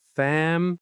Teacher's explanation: family. Stress on the first syllable.